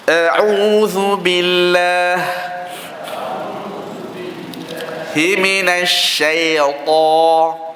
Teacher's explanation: Ini lin lah, masuk shin tafashi, ada semburan dan hamas, digabungkan dua sifat, iaitu huruf shin yang terkenalnya itu dia berangin dan semburan. Semburan dalam bahasa Arab itu tafashi.